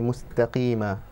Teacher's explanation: Just a small advice to you regarding some of the ayat. So when you recited your ta mustaqima, you elongated it a little bit too much. So you say mustaqima, you know, just with one stretch of haraka.